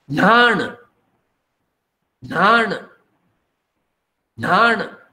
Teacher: For N, there is an aspirate sound in Konkani.